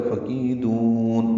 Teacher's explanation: فَكِيدُونِ، کی یا مدہ، دو واو مدہ، آخر میں نون کے نیچے زیر ہے، اس کا مطلب یہ ہے کہ یہاں پہ ایک یا ہے، فَكِيدُونِی جو کہ حذف ہے، فَكِيدُون وقفاً نون ساکن ہو جائے گا اور دال کو لمبا کر کے مد عارض سکون بنا کے پڑھیں گے۔